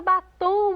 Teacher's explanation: avestruz última sílaba tônica mais uma vez oxítona na palavra batom mais uma vez a última sílaba tônica oxítona